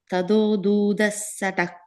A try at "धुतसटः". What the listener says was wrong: The first line, second word, short u, dhutasatah.